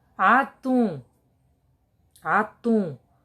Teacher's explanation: Então, sílaba tônica é o tum.